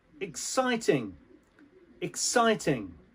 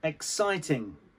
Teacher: And the emphasis on the sight.